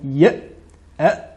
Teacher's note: Contrairement à la lettre hamza sakina, lorsque nous disons ya, les cordes vocales se referment.